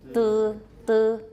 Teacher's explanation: That's a very high back unrounded vowel.